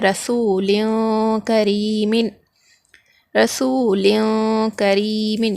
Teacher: ایک الف کے برابر ہم کھینچ کر پڑھیں گے اخفا کو · یہاں پر لام پر دو زیر ہے، تنوین ہے، تنوین کے بعد حرف اخفا میں سے کاف آ رہا، تو یہاں پر بھی ہم نون کی آواز کو ناک میں چھپا کر پڑھیں گے، اخفا کریں گے